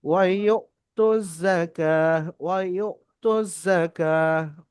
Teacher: আর হামজা যুক্ত সাকিন বা আলিফের উপর যখন সাকিন হবে সেটাও হামজা হবে। তো এখানে ডাইরেক্ট হামজার উপরে সাকিন এসছে, এটা ঝাটকা বা ধাক্কা দিয়ে পড়তে হবে।